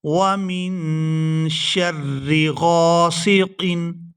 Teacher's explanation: وَمِن شَرِّ غَاسِقٍ، غین کو ہمیشہ ہی پورا ادا کیا جاتا ہے اور غین کو الف مدہ کی وجہ سے کھینچ کر ادا کریں گے۔